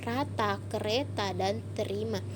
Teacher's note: fonem R yang dapat direalisasikan sebagai bunyi R Yang Bergoyang atau bergetar